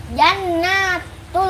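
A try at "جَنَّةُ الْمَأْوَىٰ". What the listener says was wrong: tahan tasdid nun jannatul ayo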